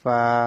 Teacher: নিচে ঠোঁটের পেট সামনের উপরে 2 দাঁতের আগার সঙ্গে লাগিয়ে ফা। উপরের দাঁতগুলো যখন নিচে ঠোঁটের পেটের সাথে লাগবে, ওইখান থেকে ফা উচ্চারিত হবে, ফা এভাবে। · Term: 14 নম্বর মাখরাজ